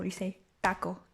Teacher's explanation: in spanish it's like a sharp oh you say taco and that's it you don't like round it